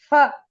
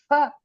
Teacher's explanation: when they put a pha and a dot, it says fa. There is no p, the mouth won't close. They say fa, but in Sanskrit there is no fa.